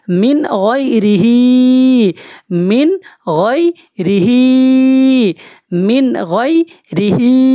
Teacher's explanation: গুন্না হবে না কারণ নুন সাকিনের পরে গাইন আসছে গাইন হচ্ছে হুরফা হালকি মিন গাইন ইয়া জবর গই ইয়া রমা